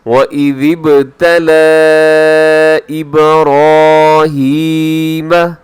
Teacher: وَإِذِ ابْتَلَىٰ إِبْرَاهِيمَ، اس میں کیا ہے کہ لام کے اوپر کھڑا زبر اور جو کہ حروف مدہ کے قائم مقام ہوتا ہے، یہاں چھوٹی مد ہو رہی ہے، مد منفصل۔ حروف مدہ اور حمزہ الگ الگ الفاظ کے اندر۔